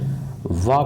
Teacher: वा का जो उच्चारण स्थान है वो है कंठोष्ठय